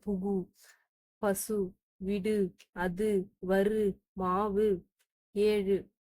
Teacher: தனிக்குறள் எழுத்தை அடுத்து வரும்போது வல்லின உகரங்கள் ஒரு மாத்திரை அளவுக்கு முழுமையாக ஒழிக்கும்.